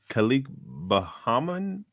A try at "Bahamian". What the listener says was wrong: Bahamian. Bahamian, not Bohemian. Bahamian.